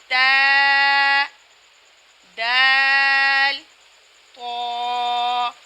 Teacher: تا، دال، طا کا مخرج یہ ہے کہ زبان کی نوک جب اوپر کے اگلے 2 دانتوں کی جڑ کے آدھے حصے سے لگے تو تا، دال اور طا۔ زبان کی نوک جب اوپر کے اگلے 2 دانتوں کی جڑ کے آدھے حصے سے لگے تو یہ تینوں حرف ادا ہوں گے